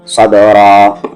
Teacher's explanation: سقبہ میں صب، را کے ساتھ الف را، صبرا، ایک زبر ہٹ رہا ہے آیت کی وجہ سے، اور با پہ یہاں قلقلہ ہے، صبرا